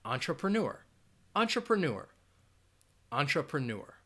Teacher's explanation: you are going to have that schwa sound in that second and third syllable